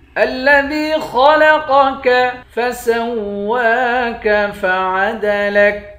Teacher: الذی حمزے کو لام کے ساتھ ملا کر لام کو سختی کے ساتھ جمع کر پڑھیں گے، دال کو یا کے ساتھ ملا کر ایک الف کی مقدار کھینچیں گے، یا حروف مدہ ہے۔ خا اور قاف دونوں کو موٹا پڑھیں گے۔ الذی خلقک فسواک فعدلک، سین کو واو کے ساتھ ملا کر واو پر کھڑا زبر ہے، ایک الف کی مقدار کھینچیں گے۔